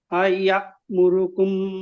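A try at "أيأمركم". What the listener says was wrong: এখানে হলো না, এখানে আমরা কিন্তু বলেছিলাম এখানে ধাক্কা দিতে হবে, আপনি ধাক্কা দেননি। আইয়া আইয়া মুরুকুম, মুরু টান হবে না, আইয়া মুরুকুম।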